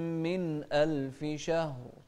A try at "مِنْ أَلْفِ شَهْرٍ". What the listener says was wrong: لازم نبين الهمزة بعد النون الساكنة كذلك الهاء في شهر نوضح الهاء هنا شهر شهر ما تسرع فيها لازم تعطي كل حرف حقه ومستحقه